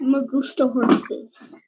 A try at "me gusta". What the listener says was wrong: Muy bien, gracias.